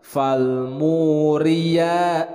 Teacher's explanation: ri di sini adalah tarkik, dibacanya tipis.